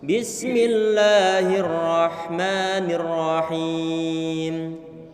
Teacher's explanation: huruf sin dalam keadaan sukun jangan diberikan qalqalah, tidak boleh diberikan pantulan. Enggak boleh kita bilang bismillah, kita alirkan suara sinnya.